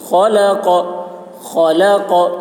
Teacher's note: الذی، ذال کی آواز باریک ہوگی. الذی خلق، خا کی آواز موٹی ہوگی، قاف کی آواز بھی موٹی ہوگی